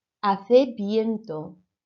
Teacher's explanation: make sure that V sounded like a B